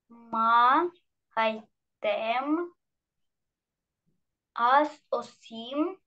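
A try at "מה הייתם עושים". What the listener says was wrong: Осим, молодец.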